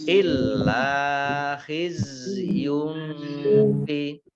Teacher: Rumah tanwin bertemu dengan huruf fa, bacaan ikhfa, dibaca samar-samar